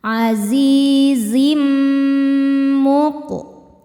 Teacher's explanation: tanwinnya dileburkan atau dimasukkan ke mim disertai dengungan, jadi bunyi M sambil tahan. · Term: idgham bi gunnah